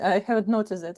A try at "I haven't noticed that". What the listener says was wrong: You said I haven't noticed it, which is good.